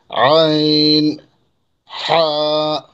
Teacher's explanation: 2 নম্বর মাখরাজ হলকের মধ্যখান হইতে